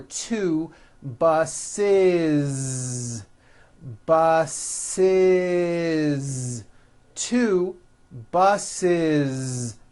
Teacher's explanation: the last sound you hear is that voiced Z